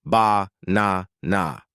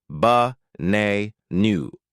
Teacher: Three clear a's, but a native speaker says ba nu. The first a is lazy. The last a is lazy. Only the middle a is strong. · The unimportant syllables get crushed into a tiny lazy sound called the schwa.